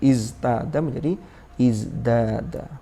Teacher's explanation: Litamatsuli sifatiz zai al-majhura. Jadi tak berubah menjadi dal, agar sama-sama memiliki sifat yang majhur sama dengan za-nya. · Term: mumatsalatun fis sifah